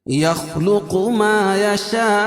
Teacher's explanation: 2 الف سے لے کر اس کو 5 الف تک اس کو کھینچ کے پڑھیں گے. اس کے درمیان کہیں بھی کھینچ سکتے ہیں آپ. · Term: مد متصل